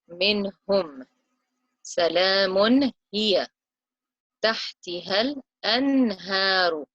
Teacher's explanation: the noon sakin is followed by a ha, which comes from the lowest part of the throat, the bottom of the throat. Minhum.